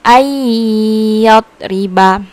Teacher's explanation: Jadi cara membacanya itu dimasukkan atau dileburkan, tidak dibunyikan an-nya ya, tapi langsung otomatis ke ya · Itu apabila nun mati atau tanwin bertemu dengan salah satu huruf idgham biguna, maka cara membacanya yaitu dileburkan atau dimasukkan bunyi hurufnya dengan berdengung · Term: idigam bigunah